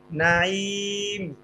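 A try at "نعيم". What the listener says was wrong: নাইম আলাদা কেন করতেছেন ভাই? মিলাই বলেন না।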